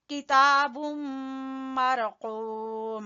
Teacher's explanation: कौफ जबान की जड़ से और वाव मद्दा मरकूम वैलुई यहाँ पे इदगाम बिलगुन्ना ठीक है